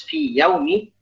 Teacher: Ya di situ bukanlah ya yang sama makhraj. Dan karena dia huruf mad, maka tidak bisa diidgham. Karena kalau kita baca fi yaumi, maka akan menghilangkan ya yang ada pada lafaz fi.